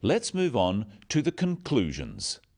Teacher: Stressing conclusions because it's the key word in the sentence. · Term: sentence stress